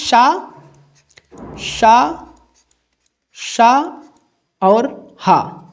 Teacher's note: आप इनका उच्चारण करेंगे तो हवा जो है मुख से रगड़ खाती हुई बाहर निकलते है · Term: उष्मा संघर्ष व्यंजन